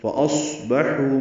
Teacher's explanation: فَأَصْبَحُوا میں صاد ساکن ہے، اس پہ ہمس ہوگا، حا مستہلک سے ادا ہوگا، حو واو مد ہے.